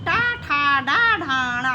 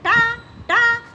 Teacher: से ऊपर वाले भाग को मूर्धा या मूर्धन्य कहते हैं और जब हम टा ठा ड ढ णा बोलते हैं तो हमारी जीभ टाल से ऊपर वाले भाग को छूती है · जब हम टा ठा डा ढाणा बोलते हैं तो हमारी जीभ ताल से ऊपर वाले भाग को छूती है। आप खुद बोल के देख लो, जब आप बोलोगे टा टा तो आपकी जीभ या ठा तो आपकी जीभ ऊपर जाके नीचे आएगी, तो आपकी जीभ मुंह के जिस भाग को स्पर्श कर रही है उसी को हम मूर्धा या मूर्धन्य कहते हैं।